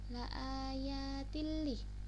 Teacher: itu ada ta di kasroten bertemu lam, itu idgham bila gunnah ya. Jadi dibacanya masuk tanpa dengung